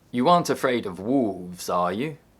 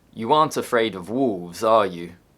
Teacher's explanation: In question tags, the intonation falls, then rises if the answer is uncertain. You aren't afraid of wolves, are you? If the answer is certain, the intonation falls.